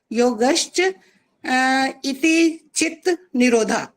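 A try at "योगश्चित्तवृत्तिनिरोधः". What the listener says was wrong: ये तो गलत हो रहा है यहीं पर। योगश्च चित्त वृत्ति निरोधा, ये है, इति नहीं है। इति नहीं है बीच में, यहाँ ईद गलत हो रहा है इसीलिए। और ये जो छोटी सी एक परिभाषा होती है उसको तो बिल्कुल पूरा का पूरा ही ठीक बोलना होता है, उसमें अगर जरा सा भी गलत हो जाए तो वो सारी की सारी गलत कहलाती है।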